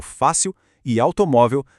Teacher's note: Aqui a sílaba tônica dá um passo para trás. Ela é a penúltima. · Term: paroxítonas